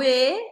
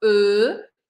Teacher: quando eu falo e eu tô meio sorrindo e quando eu falo e eu tô quase fazendo um biquinho e a boca fica redondinha